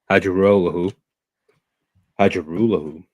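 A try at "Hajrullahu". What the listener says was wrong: The J is not pronunciate. It's like a silent H.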